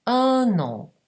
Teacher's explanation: In un an abbiamo un'altra nasale, un, e la famosa liaison. Un, prendo la N e la collego alla vocale nasale successiva.